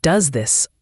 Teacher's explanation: the S sound at the end of does often blends with the th sound in this. It becomes does this almost as one word.